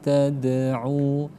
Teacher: qalqalah sugro tipis saja, tidak perlu sampai berhenti